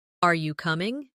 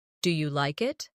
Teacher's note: In English, our voice usually rises at the end of a yes or no question.